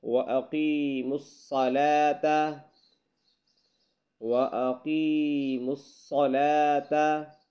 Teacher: یہاں صاد کو موٹا کر کے پڑھنا ہے